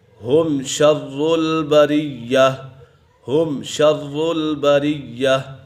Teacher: ہے تو یہاں اظہار شفوی کا قاعدہ لگ رہا ہے، کیونکہ میم سکن کے بعد حرف با اور میم کے علاوہ کوئی بھی حرف آ جائے تو میم سکن میں اظہار شفوی ہوگا، یعنی غنہ نہیں کریں گے